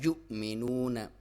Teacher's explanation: واو ساکن سے پہلے پیش ہے تو واو مدہ، اس کی لمبائی ایک الف ہے لیکن وقف کریں گے 2 سے 3 بھی کر سکتے ہیں.